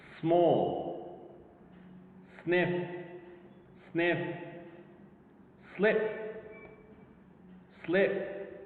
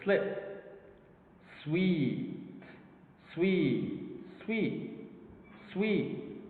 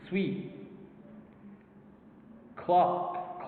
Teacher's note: the semivowels or consonants are partly devoiced